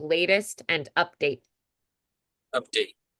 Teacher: I don't think I would make the last T as crisp update. It's more of a D there, too.